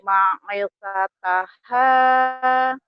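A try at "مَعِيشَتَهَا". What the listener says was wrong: I-nya panjang. H-nya panjang. Ini doang yang panjang nih. Iya, I-nya panjang. Ma'isyataha.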